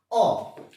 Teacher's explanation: अ का उच्चारण कीजिए तो जीभ का बीच वाला हिस्सा गड्ढा कर रहा है, हल्का गहरा हो रहा है। अ, अब उच्चारण कीजिए अ को बोलते हुए जीभ का बीच वाला हिस्सा नीचे जा रहा है, वो अग्र स्वर नहीं है। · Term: मध्य स्वर